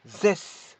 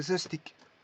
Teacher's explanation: Par contre, zestic, il est devenu court. Le S final est devenu court. · c'est une prononciation avec le S qui est prolongé